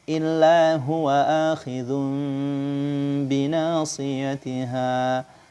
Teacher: mengubah nun sukun atau tanwin menjadi mim yang tersembunyi pada huruf ba yang disertai dengan gunnah dengan merapatkan dua bibir tanpa menekannya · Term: iqlab